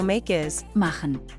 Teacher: K turned into harsh H